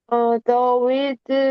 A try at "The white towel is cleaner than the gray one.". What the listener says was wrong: White, not wet. The white.